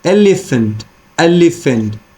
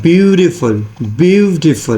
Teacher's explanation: stress comes on the first syllable so we can say that a stress syllable followed by two unstressed syllables